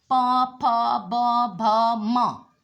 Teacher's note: पवर्ग ओष्ठ, दोनों ओठ मिलते हैं इसमें